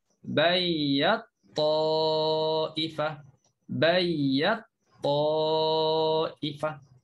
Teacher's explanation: Jadi bagi ad-duri satu ini je yang berlaku idgham kabir. Jadi masukkan ta ke dalam ta. · Ta bertemu to. Ya, ta di makhrajnya kita letaklah lidah kita di gusi. To pun sama, beza sifat aja. Jadi bagi ad-duri satu ini je yang berlaku idgham kabir. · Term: mutajanisain